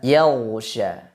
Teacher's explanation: Kalau dibaca dengan serak, yaghsha. Maka jangan sampai huruf ghain dibaca dengan aliran nafas.